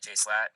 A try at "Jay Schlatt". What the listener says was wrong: Jay Slat? Do you just call him Jay Slat? It's Jay Schlatt. You said slat, not Schlatt. Slat.